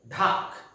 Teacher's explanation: ডয়ের সঙ্গে অ্যাসপিরেশন যোগ করে